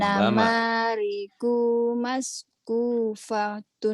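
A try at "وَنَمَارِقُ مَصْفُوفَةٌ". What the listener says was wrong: Ko-nya pendek wa namariku masfufatun kemudian yang ini yaqrauna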